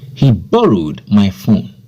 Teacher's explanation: Here, the stress word is borrowed.